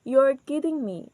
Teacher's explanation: So our voice is goes up in the words kidding and me. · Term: rising intonation